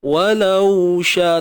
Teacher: Walau sya, tapi bunyi waw tu pastikan rakhawah itu berlaku. Jangan walau sya amboi.